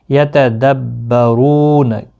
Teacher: رو واو مدہ ہے، ایک الف کی مقدار کے برابر کھینچ کر پڑھیں گے